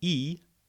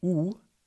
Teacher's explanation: the E is a much more stretched or tense vowel, whereas the U has more the rounding. If you say the sound E, you should notice that your lips become spread, almost like you're smiling.